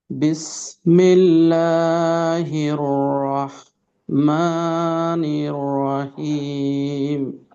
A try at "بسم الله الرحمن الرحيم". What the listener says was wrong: হাতে আরেকটু চাপ রাখতে হবে, যেহেতু আমাদের দুইটা হা। তো সেক্ষেত্রে যদি চাপ না থাকে তাহলে অন্য হা হয়ে যাবে। রহিম, রহিম।